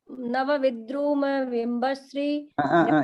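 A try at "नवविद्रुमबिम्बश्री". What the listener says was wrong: एक मिनट, विद्रुम नहीं, विद्रुम, नवविद्रुम, नवविद्रुम। आ करती है और आप अ को खा जाती है, तो आप अ सब वहां ट्रांसफर करते हैं, दो अ मिलकर आ होता है।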